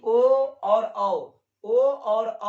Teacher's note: ओ और औ का उच्चारण कंठ और ओठ से होता है। यानी ओ और औ, ओ और औ रहेगा तो उसका उच्चारण दोस्तों कंठ और ओठ से होता है।